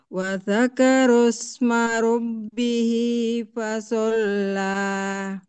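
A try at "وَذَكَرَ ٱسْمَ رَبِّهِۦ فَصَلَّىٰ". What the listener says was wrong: Hati-hati Bunda, rohnya lebih tebal lagi Bunda. Wa dzakaro diangkat pangkalnya atau Bunda dorong ke dalam ya. Ro. Lidahnya dorong ke dalam. Wa dzakaros gitu. Ya, soalnya lebih tebal lagi Bunda. Fasolla.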